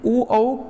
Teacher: ओ औ कंठ और ओष्ठ की सहायता से बोले जाते हैं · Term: कंठोष्ठ